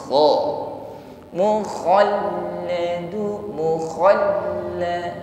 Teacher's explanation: huruf kha ada gesekan di tenggorokan atas ya, sifatnya isti'la, tebal bunyi hurufnya